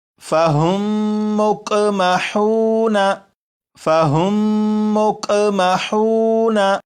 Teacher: میم ساکن کے بعد دوسری میم ہے تو اب ان دونوں لفظوں کو جب پڑھیں گے تو یہاں پر غنہ کر کے پڑھیں گے